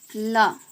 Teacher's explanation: जो इसमें मुख द्वार होता है ये क्या होता है? मध्य में मतलब बीच में बंद होता है और हवा दोनों ओर से निकल जाती है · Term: पार्श्विक वर्ण